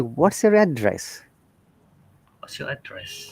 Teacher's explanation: So for address, when it is used as noun, then our tone comes from up to down. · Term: Rising to falling